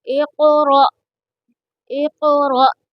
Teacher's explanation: را کو پور پڑھیں گے کیونکہ را کے اوپر زبر ہے، اور یہاں پر حمزہ کو جھٹکا دیں گے۔